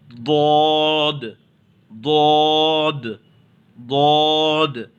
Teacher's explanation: زبان کے کنارے کو داڑھ میں دبا کر کے، منہ گول کر کے اسے ادا کیجیے، یہ بہت آسانی کے ساتھ ادا ہوگا، ضاد، ضاد، ضاد۔